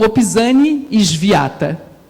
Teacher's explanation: E o W se pronuncia como W em alemão, ou seja, com som de V